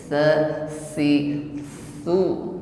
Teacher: ini huruf tsa ujung lidah bertemu ujung gigi Sari atas ya tipis sifatnya Hames ada angin yang menyertainya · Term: huruf sa